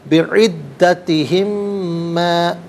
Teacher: میم ساکن کو ماں کے میم کے ساتھ ملائیں گے، میم کی آواز کو غنّے کے ساتھ ادا کریں گے